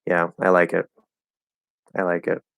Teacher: It's just very flat. It's like doesn't seem like I actually like it